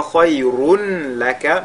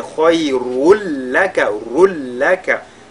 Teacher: le tanwin qu'il y a sur la lettre Ra vont fusionner dans le lam qui suit. On fera idgham bila ghunna. Ce n'est pas khayrun laka, mais khayrul laka, rul laka. · C'est comme s'il n'existait pas du tout de tanwin à ce niveau